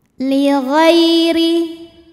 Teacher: huruf ro dibunyikan secara tarqik sebab barisnya di bawah maka dibacanya tipis